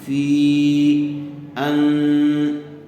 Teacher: دیکھیے حرف مدہ کے بعد دوسرے کلمے میں حمزہ آیا ہوا ہے، اس لیے یہاں مد منفصل کا قاعدہ ہوگا، فا کو تھوڑا زیادہ کھینچ کر پڑھیں گے. فی ان، ان میں غننے کے ساتھ اخفا ہوگا